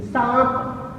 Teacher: जैसे सांप शब्द हम बोले, आ के साथ ही न की जो आवाज आ रही है नाक और मुंह से निकलते हुए सांप, इसमें आ देखो, अगर हम वर्ण विच्छेद करके देखते हैं इन शब्दों को, तो जैसे सांप शब्द है, स के साथ आ अनुनासिक, आ की आवाज जब आ रही है तो आ के साथ अनुनासिक की आवाज है, यानी हवा नाक और मुंह दोनों से निकल रही है, तो ये अनुनासिक का प्रयोग है।